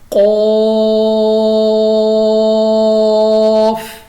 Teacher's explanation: یہ ہمارے پاس قاف مستعلیہ ہے اور مد بھی ہے، ہم نے موٹا بھی پڑھا اور کھینچا بھی ہے